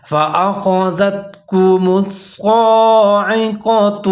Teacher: فأخذتكم کاف کے اوپر پیش ہے، کاف باریک والا ہے، میم کے اوپر پیش ہے، لیکن آگے حرف ہے صاد، یہ مشدد ہے اور اس کے اوپر کھڑا زبر ہے، تو میم اور صاد دونوں ملا کے پڑھیں گے اور صاد کو 1 الف کے برابر لمبا کر کے پڑھیں گے